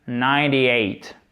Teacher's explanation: On ne prononce pas le E et on prononce le T comme quasiment un de, presque comme un de.